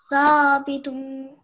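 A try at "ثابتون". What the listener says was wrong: Now you're not pronouncing the tha right. Thabitun. So your tongue should be coming slightly out of your mouth, and it should be touching your upper teeth when you say this word.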